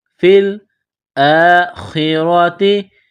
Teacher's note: را کے اوپر زبر ہے، را کو موٹا کرنا ہے